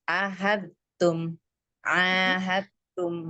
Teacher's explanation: Jadi dalnya enggak kita baca. Ahatum langsung ke tahatum sama sekali enggak enggak ada dalnya gitu.